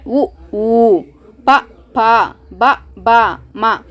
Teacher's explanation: ಇವು ತುಟಿಯಿಂದ ಸ್ಟಾರ್ಟ್ ಆಗುತ್ತೆ, ತುಟಿಯಿಂದ ಉದ್ಭವ ಆಗುತ್ತೆ ಇವು. ಅದಕ್ಕೆ ಇವನ್ನ ಓಷ್ಯವರ್ಣ ಅಂತ ಕರಿತೀವಿ. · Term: ಓಷ್ಟ್ಯ ವರ್ಣ, ಓಷ್ಟ್ಯವರ್ಣ